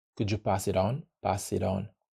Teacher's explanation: so the t is very clear I'm saying it on purpose in American English this T will become a d